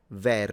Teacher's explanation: it appears to have open e in both slots